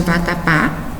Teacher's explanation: Quanto à tonicidade, as sílabas, elas são classificadas como oxítona, quando a sílaba tônica da palavra for a última sílaba, que é o caso de vatapá.